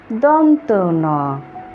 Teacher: দাঁতে আর জিভে মিলে দন্ত ন